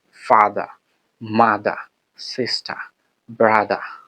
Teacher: ব্রিটিশরা অর্থাৎ নেটিভরা, তারা মূলত আর উচ্চারণ করে না। শেষে যে র আছে, সেই রটাকে খুবই স্বল্পভাবে, মানে একটু উচ্চারণ করে থাকে।